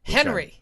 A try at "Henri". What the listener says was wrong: No, it's Henri. It's French. You pronounce it Henri because if you study French, you roll your R's. Henri.